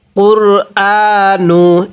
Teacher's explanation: এখানে অনেকেই কুরআনু পড়ি অর্থাৎ রয়ের উপর জবর পরে চলে যায়, এখানে রয়ের উপর সাকিন পড়তে হবে।